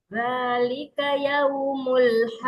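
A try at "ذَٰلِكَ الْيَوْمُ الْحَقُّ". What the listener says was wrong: Dzalikal alif lam ta'rif.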